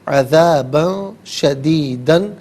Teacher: عذابا میں با پر دو زبر کی تنوین، اس کے بعد شین حرف اخفا ہے تو با پر اخفا کریں گے ، ان تنوین پر اخفا کریں گے،